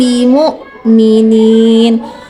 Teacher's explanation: Mim sukun bertemu ba, ikhfa syafawi jangan lupa ditahan